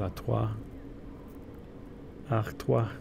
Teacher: English R is a little bit more in the middle of the mouth, whereas the Spanish is at the front, and the French is at the back.